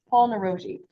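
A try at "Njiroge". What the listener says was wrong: Jiroge. The N is silent.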